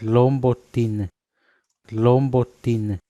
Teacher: se realiza el acento en la primera sílaba y no se realiza el E. La manera que se entiende es que había un E subyacente, después se pone el acento y después cae el E.